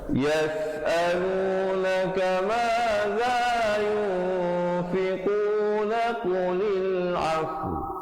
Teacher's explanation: za di ujung lidah, ikhfa 2 harakat. Fiquna qulil afu, last kali makhrajnya di waw.